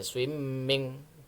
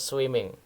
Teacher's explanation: Swimming itu walaupun M-nya 2 juga kita enggak perlu memantapkan dengan berlama-lama di bunyi M, misalnya swimming, tidak ya.